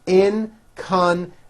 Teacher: there is also a hidden y in the last syllable